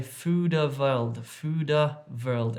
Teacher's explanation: So apparently there's a popular supermarket in the south of India called Food World, but a lot of Dravidian speakers say Fooda World, and this little vowel sound all of a sudden gets inserted between the d and the w sound there